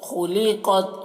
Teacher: خا کو اور قاف کو پر پڑھ رہے ہیں